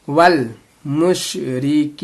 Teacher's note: काफी या ज़ेर की या मद्दा है, या साकिन से पहले अगर जेर आता है तो इसको या मद्दा कहते हैं, और ये लॉन्ग हरकत भी है, इसको थोड़ा खींचेंगे